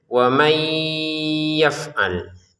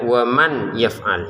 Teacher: Nah, waman bertemu ya, kita masukin nunnya ke ya disertai dengungan. Jadi cara bacanya wamay yaf'al. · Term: masukkan dengan dengungan